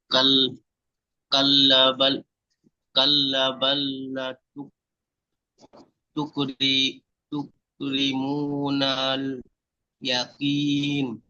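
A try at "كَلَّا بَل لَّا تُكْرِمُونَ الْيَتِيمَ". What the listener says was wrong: কাল্লা টান হবে, বাল্লা টান হবে, সব আলিম মাদ্দা, আলিফের ডান দিকে যাবার। কাল্লা বাল্লা তুকরিমুনাল ইয়াতীম।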